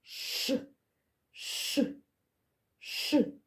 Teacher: звук ш ніколи не буває м'яким перед звуком і вимовляється напівпом'якшено малята повторюйте за мною ша шаша